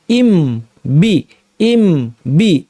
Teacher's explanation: মিম শেষ, এবার নতুন করে দুই ঠোঁট উঠিয়ে আবার লাগিয়ে বলতাম বি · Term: ইজহার